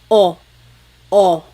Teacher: Your tongue gets kind of pushed back and down a little bit and the inside of your mouth is open and wide. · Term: letter O